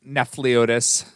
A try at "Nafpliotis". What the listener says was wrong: Left off the P. Nafpliotis.